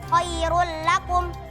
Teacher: Yang kedua, hukumnya idgham bila gunnah pada kata khairul lakum. Karena dhammatain bertemu dengan huruf lam, maka dibaca melebur dan tidak dengung.